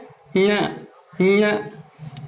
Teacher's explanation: तो जिह्वा को स्पर्श करके और देखिए क्या बनता है, ये तालु में जिह्वा हमारी ऊपर की ओर टिकती है। ञ, ये ञ जो है नाक से ध्वनि निकलती है, इसलिए तालु नासिक्य कहलाता है